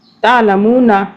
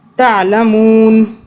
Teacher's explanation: تعلمون نہیں پڑھیں گے کیونکہ ہم یہاں پہ رک رہے ہیں، نون کو ہم ساکن کر دیں گے